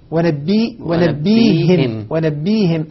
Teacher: أبدل الهمزة ياء وكسر الهاء لمجانسة الياء التي قبلها